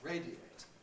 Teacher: To radiate, on the other hand, is not compressible. It has to stay as 3 syllables because A at that point is strong